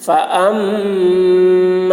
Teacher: میم مشدد غنہ ہوگا